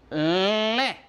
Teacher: Ça se prononce cette voyelle nasale. Je le fais avec la bouche, mais l'air aussi passe par le nez.